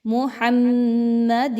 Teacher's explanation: اس میم کو بہت مضبوطی کے ساتھ ہا کے ساتھ پڑھنا ہے غنہ کرتے ہوئے